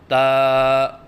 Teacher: حرف ہے تا، مخرج زبان کی نوک اور ثنایا علیہ کی جڑ، اس سے تا ادا ہوتا ہے۔ یعنی زبان کی نوک جب اوپر والے سامنے کے دانتوں کی جڑ سے لگے تو اس سے تا ادا ہوتا ہے